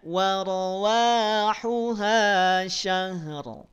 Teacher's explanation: syahr dibaca tebal karena sebelumnya ada fathah